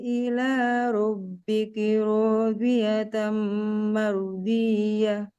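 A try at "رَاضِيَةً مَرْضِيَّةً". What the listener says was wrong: Nah, tinggal Masya Allah ya. Sudah ada ketebalannya.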